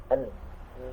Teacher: Nun ini ya huruf yang punya dua makhraj ya. Selain dari ujung lidah, dia juga keluar dari rongga hidung ya.